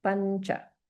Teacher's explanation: the anuswara is combined with a palatal sound, cha. And so the corresponding nasal is nya.